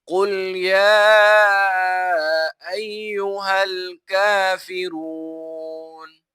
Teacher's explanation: لام کے اوپر مد ہے، یہ مد منفصل ہے کیونکہ حمزہ دوسرے کلمے میں ہے، تو اس وجہ سے یہاں پر مد منفصل کی جائے گی، جسے 3 الف کی مقدار کھینچا جائے گا